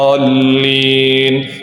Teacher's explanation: Dha sifatnya, kemudian dha itu panjangnya 6, ya, itu mad lazim, ya, itu adalah mad lazim sehingga harus dipanjangkan 6